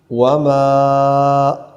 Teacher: مد منفصل ہے، لمبا کریں گے 2 الف تک کم از کم.